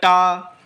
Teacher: फिर बोला ट मूर्धा में जिव्या स्पर्श हो रही है।